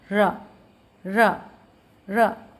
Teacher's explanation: अगर आप रा को बोल के देखेंगे तो आपको स्वयं क्लियर हो जाएगा कि अगर हम रा को बोलते हैं तो जीवा जो है 2 से 3 बार उसमें जो है कंपन होता है। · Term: प्रकंपित व्यंजन